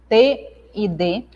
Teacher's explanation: Dentais, pronunciadas pelo contato da língua com os dentes.